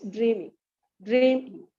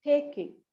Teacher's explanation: dream is given more stress it it is pronounced more louder it just gives uh takes the more length of time